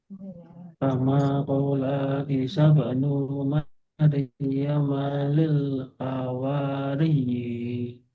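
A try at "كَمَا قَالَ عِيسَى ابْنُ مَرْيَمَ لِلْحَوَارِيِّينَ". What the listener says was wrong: Jadi, la pendek. Ini benar benar. Sa-nya benar. Nu pendek. Maryama pendek juga. Jadi, kama qala Isa banu Maryam lil hawariyin.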